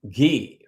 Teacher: it's voiced and aspirated